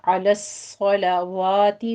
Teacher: एक है अलस्सलावाती, वाव के ऊपर फतह कायमा है, ये आपने पूरा 2 काउंट करना है। पहले आप सौत को पुर पढ़ेंगे, सौत की तशदीद अदा करेंगे, इसके ऊपर सीटी की आवाज़ भी आएगी। अलस्सला सोलो नहीं कहना, लाम को आपने बारीक रखना है।